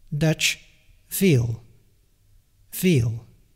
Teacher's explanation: our V is just a bit more in the direction of the F, which is completely voiceless